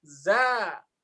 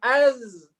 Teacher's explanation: ketika zai itu berharokat, za, dia menjauh. Ya kan? Ketika dia disukun az, mendekat ke makhrajnya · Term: gesekan